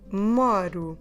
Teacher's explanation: Actually, this one is really for all regular verbs, including the ER and IR, or in Portuguese, ir, because just the first person they have in common. Okay, so it is O, but I'm reading U, like a double O in English, and I'm stressing the syllable before.